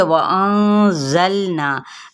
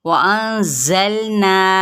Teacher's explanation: ज़ा ये हरूफ सफ़ीरिया में से है। सफ़ीरिया का क्या मतलब होता है, मिसल सीटी के इसकी आवाज़ निकलेगी।